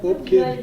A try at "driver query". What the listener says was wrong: When you try to type Bob Carey, when you type Bob Carey, you're saying drive carry. I'm saying driver query. That's Query. Query. That's a query. That's one word. Driver query.